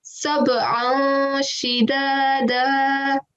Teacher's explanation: So we will say an, but because the letter after that is a sheen, we will give a nasal sound.